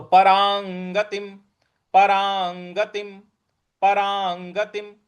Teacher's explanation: र के ऊपर जो अनुस्वार है उसके आगे ग है तो क ख ग घ अंग का जो अंग आता है उसका उच्चारण यहां पे अनुस्वार के लिए लाना है तो परांगतिम परांगतिम परांगतिम म के नीचे हलंत है तो परांगतिम